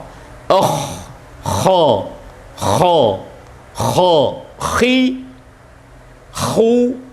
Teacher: Huruf kha dikatakan isti'la yang berarti terangkatnya suara dengan cara mengangkat pangkal lidah ke atas.